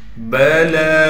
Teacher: لام پر کڑا زبر ہونے کی وجہ سے لام کو ایک الف کی مقدار کھینچنا ہے